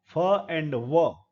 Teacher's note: जो ऊपर के जबड़े की तरफ जाएगा वो एक्टिव आर्टिकुलेटर होगा लोअर लिप एक्टिव आर्टिकुलेटर है पैसिव आर्टिकुलेटर है ऊपर के दांत · लोअर लिप एक्टिव आर्टिकुलेटर है, पैसिव आर्टिकुलेटर है ऊपर के दांत, इसीलिए लेबियो मीन्स होठ, डेंटल नीचे का होठ ऊपर के दांत की तरफ जाएगा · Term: लीब डेंटल, लेबियोडेंटल